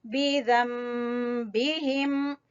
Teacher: ज़म गुन्ना करते हुए मीम की आवाज निकालेंगे